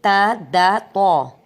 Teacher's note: دانتوں کی آگے والے 2 دانتوں کی جڑ سے